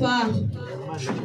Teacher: নিচে ঠোঁটের পেট সামনে উপরে 2 দাঁতে পেট ও আগার সঙ্গে লাগায় একটি হরফ উচ্চারিত হয়